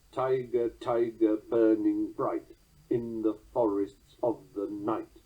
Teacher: Blake's famous opening lines drop the natural weak ending of the 4th trochees, giving a 7-syllable count and a strong resolution. Dum-de-dum-de-dum-de-dum. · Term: catalectic subtraction